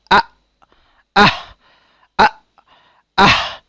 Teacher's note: কণ্ঠনালীর নিম্নভাগ থেকে উচ্চারিত হয় 2টি হরফ, এ দুটি হলো হামজা ও হা